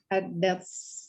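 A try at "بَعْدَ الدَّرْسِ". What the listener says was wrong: Ayo, ba'dad dars. Ya, di sini harusnya ada tasdid, ya. Huruf dalnya ini ada tasdid, ya, ba'dad darsi, ya, ba'dad dars.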